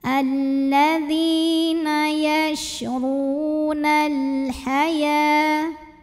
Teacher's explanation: Lalu alif lamnya disebut dengan alif lam qamariyah karena alif lam menghadapi huruf qamariyah yaitu huruf ha. Maka lam sukun ini dibunyikan dengan idhar atau jelas.